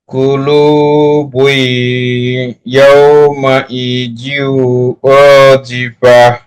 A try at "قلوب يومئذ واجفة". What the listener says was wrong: খুব সুন্দর বলেছে জি